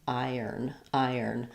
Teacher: If I were to look at the IPA of iron, I have first syllable stress, I have the I diphthong, and then I have the n sounds.